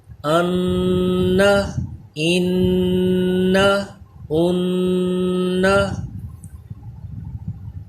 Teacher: مشدد میں بھی ہمیشہ غنہ کر کے پڑھتے ہیں، میم کی طرح اس پہ بھی دیر لگا کے ایک الف کے برابر غنہ کیجئے، ناک میں آواز لے جائیے اس کی،